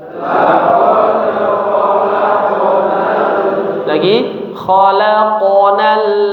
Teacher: Jangan laqad khalaqnal tapi mengalir saja huruf qalqalahnya mengalir saja tidak terlalu dipantulkan dengan keras